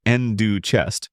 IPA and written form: ˈɛndə tʃɛst (Ender Chest)